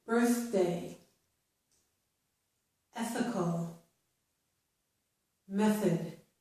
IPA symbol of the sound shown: θ